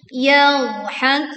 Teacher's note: ini dhad tidak memantul. Yadhakun. Falyawmal ladzina amanu minal kuffari yadhakun.